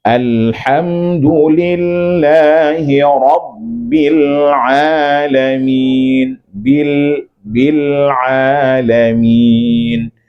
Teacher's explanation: Lam jangan terpantul, Pak. Alirkan.